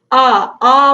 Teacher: जैसे कि आ बोल के देखिए आपका पूरा मुख खुल जाता है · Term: विवृत स्वर